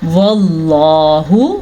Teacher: لفظ اللہ کو ہم نے پر پڑھنا ہے، موٹا کر کے پڑھنا ہے، کیونکہ لفظ اللہ سے پہلے والے حرف کے اوپر یا پچھلے حرف کے اوپر زبر ہے۔